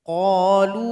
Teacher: lu ini baru dipanjangkan karena dia gabung dengan hamzah. Panjangnya 4 atau 5 harokat.